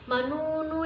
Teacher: Panjangnya satu alif dua harokat. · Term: matobi'i